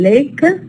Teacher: we call it the soft l in Lake it occurs in initial position